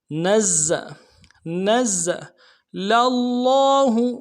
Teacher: ما, نون کو زا کے ساتھ ملانا ہے, زا کے اوپر تشدید زور دیں گے. اگلے زا کو سیٹی, یعنی سیٹی ہوگی زا میں, سیٹی نکالیں گے